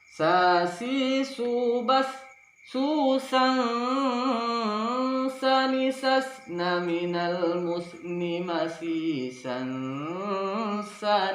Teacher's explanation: Sebab itu yang sempurna kita menempatkannya, ujung lidah kita hampir bertemu dengan gigi bawahnya sambil menyamar-nyamarkannya dan mendengungkannya 2-3 ketukan. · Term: ikhfa